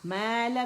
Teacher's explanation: الف ممدودہ میم کی آواز کو 2 کاؤنٹ کے لیے کھینچ رہا ہے اور یہ ما کی آواز آئے گی، ما نہیں آئے گی، ٹھیک ہے۔